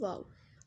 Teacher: वाव दोनों होंठों की गुलाई से अदा होता है